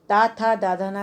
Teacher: ता था दाधा ना अगर आप बोलते हैं तो दांत का स्पर्श होता है, तो ये दंत में आते हैं